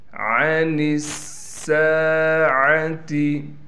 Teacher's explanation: لام کے بعد واو ہونے کی وجہ سے لام کو ایک الف کی مقدار کھینچیں گے۔ عن الساعة، نون کو سین سے ملائیں گے، اس لیے کہ سین پر تشدید ہے، اور سین پر تھوڑا ٹھہراؤ کرنے کے ساتھ سین میں سیٹی بھی نکالیں گے، اور پھر سین کے بعد الف ہونے کی وجہ سے سین کو ایک الف کی مقدار کھینچیں گے۔